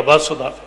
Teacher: ਬੜੇ ਧਿਆਨ ਨਾਲ ਉਸ ਔਂਕੜ ਨੂੰ ਬੋਲਣਾ, ਬਿਲਕੁਲ ਹਲਕਾ, ਤੇ ਸ਼ਬਦ ਰਹਿ ਜਾਏਗਾ ਵਸੁਧਾ।